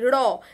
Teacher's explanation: এরপরে দেখো কম্পিত ধ্বনি র, জিভটাকে কম্পনের সাহায্যে এই র উচ্চারিত হচ্ছে, সেই জন্য বয়সীর্ণরা হচ্ছে কম্পিত ধ্বনি।